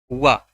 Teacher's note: वा जो है दंतोष्ठ है, दांत से और ओठ से, दंतोष्ठ, इसलिए इसको दंतोष्ठ कहा जाता है।